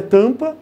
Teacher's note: Tornar a vogal anterior um som nasal. E essa nasalização, essa mudança de som, é uma mudança mínima de som.